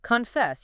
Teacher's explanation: You can almost feel your voice going up on that second part. Exactly. The energy is at the end.